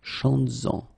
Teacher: you will have to keep this S, z, chantes-en, okay, to have this link between the two